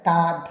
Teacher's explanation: അതിന്റെ പിൻഭാഗം കേട്ടോ പിന്നെ വരുന്നത് ദന്തമാണ് പല്ലുകൾ അതായത് ദന്തങ്ങളിൽ നാവ് സ്പർശിച്ചുള്ള ശബ്ദങ്ങൾ ഉണ്ട് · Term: ദന്ത്യാക്ഷരങ്ങൾ